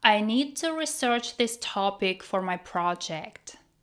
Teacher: As a verb, it is pronounced like: ri-SERCH